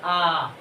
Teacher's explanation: विवृतीय स्वर, इसमें सबसे अधिक मुख खुलता है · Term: विवृत स्वर